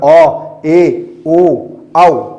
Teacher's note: जिन स्वरों के उच्चारण में मुख द्वार जो है वो आपका आधा खुलता है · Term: अर्ध विवृत